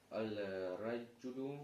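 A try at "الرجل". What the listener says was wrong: Ро, какая буква? Шамсия или хамария? Шамсия? Значит, аль не читается, да? Ар-раджулю. Там таштид, видишь же? Ар-раджулю.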